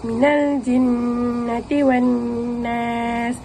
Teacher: nun sabdu yang ditekan pada nun sabdu secara 2 harakat dan dengung